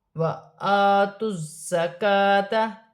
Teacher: زا مشدد ہے، جماؤ کے ساتھ ادا کیا جائے گا، سیٹی والا حرف ہے اور اپنے سے پہلے حرف کی حرکت کے ساتھ ملا کر پڑھا جائے گا۔ · کاف باریک ہے، کھڑی زبر ہے، ایک الف کی مقدار کھینچ کر پڑھا جائے گا